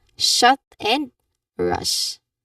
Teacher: pull your tongue back farther than for S or Z. The tip of your tongue points towards the roof of your mouth but doesn't quite touch it or push the air out leaving a you know um create living a soft sashing sound.